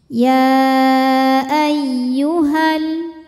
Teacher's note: Lam tasydid mengandung 2 lam, lam sukun dan lam fathah. Lam yang sukun tidak dibaca, kita langsung masukkan ke lam kedua. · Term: alif lam syamsiyah